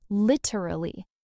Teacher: Yeah, a lot of people say lit-er-al-ly, putting the stress on the wrong syllable. The correct stress is actually on the first syllable, lit-er-al-ly. And in fast speech, it becomes lit-er-al-ly, three syllables.